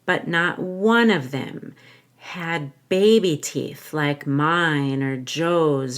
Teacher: I'm going to stress the word one for the storytelling to make it more dramatic